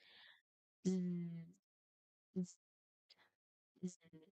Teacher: This is a continuous sound that is voiced partner of S. So it is comparison or mirroring the letter S sound which is a hissing sound. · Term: letter Z